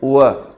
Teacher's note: अब ये क्या होता है कि जब अपन बोलते हैं व व में भी थोड़े से होठ गोल होते हैं